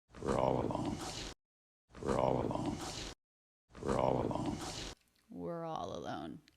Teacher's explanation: low in vocal energy so it has that popcorn quality to the voice where the vocal cords aren't fully engaged